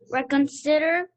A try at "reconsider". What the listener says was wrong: You're getting warmer, not quite. It's a short I, so si, I. Reconsider.